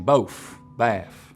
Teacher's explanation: you also get f for final th sounds here